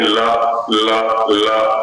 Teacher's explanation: इधर उत्तर भारत में लगभग दंत मूल पर है, मसूड़ों की ओर जिह्वा जाती है, दांत की ओर न जाकर के।